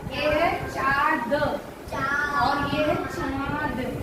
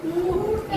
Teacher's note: ऊ चंद्रबिंदी ट, ऊंट। अनुनासिक, नाक में आवाज जाएगी, नाक से बोलेंगे ऊंट